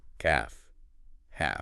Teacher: The L sound. It's gone. Silent L.